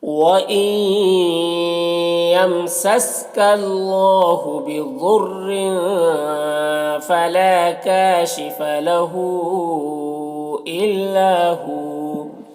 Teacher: یہاں پر واو مدہ ہوگا، اسے ایک الف کے برابر کھینچ کر پڑھیں گے، اس طرح سے۔